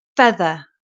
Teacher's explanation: This is a difficult one because the first part of the word, your top teeth are on your bottom lip. And the second part of the word, the tongue comes between your teeth.